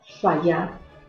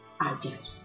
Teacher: desaparición fonética y gráfica de la F, inicial latina que es sustituida por H